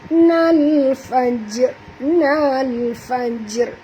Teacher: dekat jim ini ada mati, maka kita kena lantunkan dia dengan lantunan kecil qalqalah